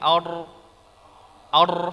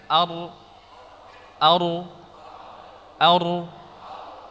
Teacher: huruf ra yang ada dalam al-qur'an dari ujung langit-langit